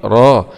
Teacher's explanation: راء فتحة مع التفخيم